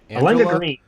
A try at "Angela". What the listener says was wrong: It's literally just Angela. You put the emphasis on the wrong syllable.